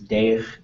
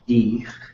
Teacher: when there is an EI, which we know as an A sound, that'll be pronounced as E. And so in some communities, this means Deich is Dich, which is up in this area up in Yakutat.